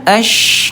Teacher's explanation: dia tempat keluarnya tengah lidah dinaikin ke tengah langit-langit ya. Tapi ini bunda hati-hati, dinaikin doang ya, ash gitu ya, tidak ditekan, tidak ash ya, minasya, nggak ditekan. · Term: huruf shin